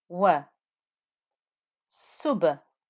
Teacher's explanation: the lamb in the word Allah got the thick heaviness and it's had a two count stretch